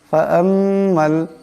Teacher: মিমের উপর তাসদীদ আছে, মিম মুশাদ্দাদের একালি পরিমাণ গুণা হবে